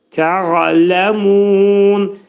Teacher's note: Ayn hərfinin məxrəcini boğazın ortasından çıxarırıq.